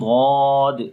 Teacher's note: Basically اس ضاد کے اندر ایک صفت ہوتی ہے جو کہ جس کا تعلق تو صفات کے اندر ہے، لیکن میں آپ کو یہاں پر بھی بتا رہا ہوں کہ جب ہم ضاد ادا کرتے ہیں تو اس کے اندر صفت استطالت ہوتی ہے، یعنی کہ اس حرف کو لمبا کر کے پڑھتے ہیں۔ ایک تو ہم لمبا کرتے ہیں ضاد ایسے، ٹھیک ہے۔